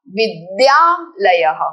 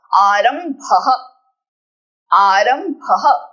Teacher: Your द should be soft अल्पप्राण।